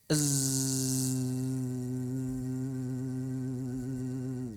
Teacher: Bisa kita buktikan zai pita suara bergetar. Z bergetar ya. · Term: sifat jahr